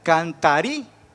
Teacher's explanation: Pero al pronunciar la palabra cantaríais, esta suena fuerte, la I, la primera